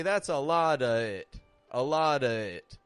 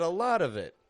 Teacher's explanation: If the word following of begins with a vowel sound, we pronounce a v, of. It's awkward to go from a schwa, to a vowel sound.